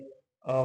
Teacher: इसमें केवल जो हवा होती है वो मुंह से ठीक है मुंह से निकलती है। इसलिए इसको निरनासी कहते हैं।